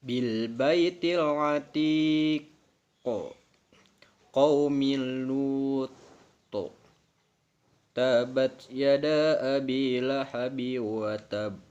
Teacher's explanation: Hukum bacaan disebut qalqalah kubro yakni apabila salah satu huruf qalqalah berharkat sukun mati karena waqaf atau berhenti di akhir kalimat, maka bacanya harus lebih jelas dan sangat memantul